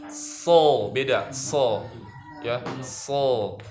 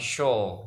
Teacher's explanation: seharusnya dia bukan di bibir tapi di ujung lidah